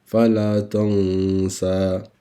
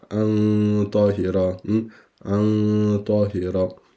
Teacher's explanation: mentre non diciamo fala tansa, ma nascondiamo, sopprimiamo il nun. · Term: ikhfa